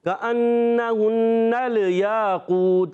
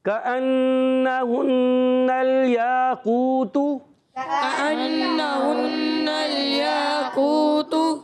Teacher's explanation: نون کی یہاں زبر کو لام سے ملائیں گے، لام کو ہلائیں گے نہیں کیونکہ حرف قلقلہ نہیں ہے